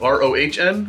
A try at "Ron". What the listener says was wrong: usually prefer to throw off the H. The H is silent.